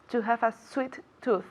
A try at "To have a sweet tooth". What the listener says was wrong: Sweet tooth. Very good.